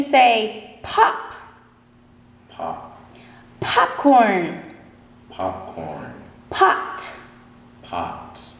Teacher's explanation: it's a voiceless consonant so you won't feel the vibration in your throat you'll actually feel the air on your hand